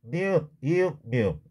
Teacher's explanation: 니은, 이응, 미음 얘네들은 코를 울리는 소리이기 때문에 코 비자를 쓰는 비음이에요